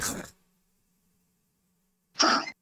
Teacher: From the top throat, the خ sound should be there.